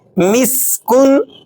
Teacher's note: سین کو آپ نے باریک سیٹی کے ساتھ پڑھنا ہوتا ہے ، سین کو آپ سا کی طرح نہیں پڑھیں گے، سین